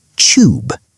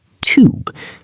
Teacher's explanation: We must take the tube, using the British word for the subway. He pronounced the two in tube like a chew sound.